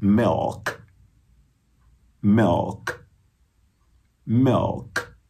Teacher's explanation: E esse I é um I meio E.